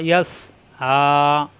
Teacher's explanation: আইন খাড়া যাবর কণ্ঠনালীতে চাপ দিয়ে, মাদের হরফ এক আলিফ টান